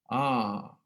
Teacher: neste A eu tenho um pouco mais de redondez no som, né? A minha laringe está um pouco mais baixa, o palato está alto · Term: A mais arredondado